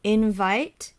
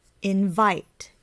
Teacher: invite the stress is on the second syllable